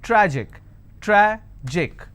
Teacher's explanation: I will stress on tra